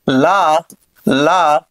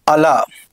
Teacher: లా అనేది దంతమూలీయ పార్శ్వికము, అంటే ఇక్కడ దంతమూలీయ పార్శ్వికము. అలా అనేదేమో మూర్ధన్య పార్శ్వికము. దంతమూలీయ పార్శ్వికము అంటే దంతాలకు సంబంధించినది కాబట్టి.